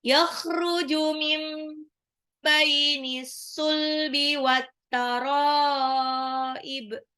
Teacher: nun sukun ketemu ba iklab ya. Jadi nunnya jadi mim kecil